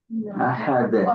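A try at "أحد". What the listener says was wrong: ওটা ওটা তোমার আলিফ টান হবে না বাট কলকলা হবে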